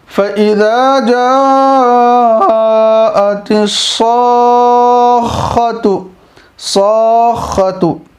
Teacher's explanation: تو یہاں کیا ہو رہا ہے؟ الف مدہ ہے، اس کے بعد تشدید ہے، تو مد کو کھینچنا بھی ہے، کھینچنے کے ساتھ ساتھ آگے کی تشدید سے ملانا بھی ہے